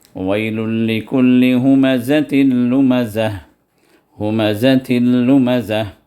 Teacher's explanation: یہ تنوین لام میں داخل ہو گئی، اور بغیر آواز کے، اس میں کوئی غنہ نہیں ہے، صرف ادغام ہے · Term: ادغام بغیر غننے کے